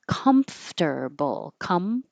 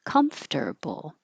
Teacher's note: Your lips close for the M and then your top teeth are on your bottom lip for the F with airflow.